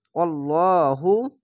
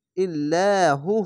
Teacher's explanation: এখানে লহু হচ্ছে কেন, আল্লাহ লেখা যদি থাকে তার ডান পাশের অক্ষরটি দেখবেন, যদি ওপরে যাবার পেশ যদি আসে তাহলে মোটা করে হবে আল্লাহু, আর যদি নিচে যদি আসতো জের তাহলে ইল্লাহু হতো, ইল্লা পাতলা করে হতো, আর উপরে থাকলে মোটা করে হবে আল্লাহু।